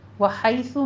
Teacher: वहैसु में हा वस्ते हलक से अदा करना है, और आगे या लीन है। सा पढ़ते वक़्त आपने ज़मा है, दोनों होठों को गोल कीजिए और सा में सीटी की आवाज़ नहीं आनी चाहिए।